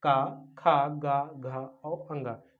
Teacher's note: ये हमारे कंठ से निकलते हैं